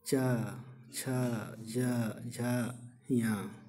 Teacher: इसको उच्चारण में जीभ तालु में सटती है तो हम कह सकते हैं ये स्पर्श व्यंजन है।